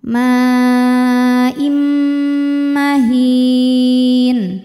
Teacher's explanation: Mimma im ada hukum idgham bi gunnah, sebab ada tanwin kasrah menghadapi huruf mim, maka tanwinnya dileburkan ke mim. Im jadi bunyinya M ya, sambil nahan dengungkan.